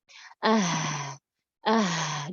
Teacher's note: Huruf H yang lagi sukun ya. Jadi caranya dikuatkan huruf H-nya dengan cara menyempitkan makhrajnya. Makhrajnya disempitkan dan menyempurnakan hamas dan rokhawahnya.